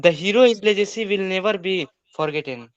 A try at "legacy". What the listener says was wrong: लिगेसी, लिगेसी, लिगेसी नहीं होगा। लेगेसी, लेगेसी होता है, लेगेसी।